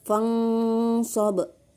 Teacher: cara membacanya samar-samar membentuk huruf SH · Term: ikhfa Hakiki